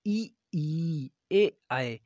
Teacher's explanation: आपके जो जुबान का आगे वाला हिस्सा है, जीभ के आगे वाले हिस्से से ये आपके बोले जाते हैं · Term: अग्र स्वर